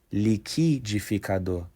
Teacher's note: For example, people in Rio might say liquidificador, where liqui becomes liqui and the R sound at the end is almost silent